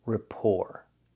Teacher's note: And the t at the end is silent. Don't pronounce the t. It ends with the or sound.